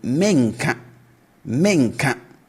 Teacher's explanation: the future negative, we raise the tone at the start